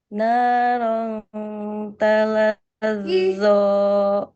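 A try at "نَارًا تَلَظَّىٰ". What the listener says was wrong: Cuman zo-nya jangan zo ya, Bun. Jangan zo, tapi tadi coba bihafiznya.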